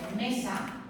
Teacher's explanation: la sílaba tónica es me y esa la marco con el acento, la marco con la voz